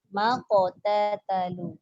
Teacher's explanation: Dia tak boleh keluar angin sebab qaf tu dia syiddah. Dia jahar.